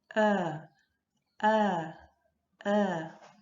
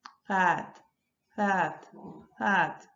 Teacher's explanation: la A, que es bien anterior, pero subimos un poquito la lengua